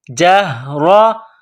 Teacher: اللہ، نر اللہ، جہرتاً، جیم کو ہا کے ساتھ ملانا ہے، را کے اوپر زبر ہے تو را کو موٹا کرنا ہے